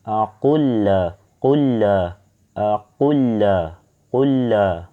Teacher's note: seolah-olah lamnya yang tidak mempunyai tasdid ini seolah-olah bertasdid ya teman-teman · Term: idgham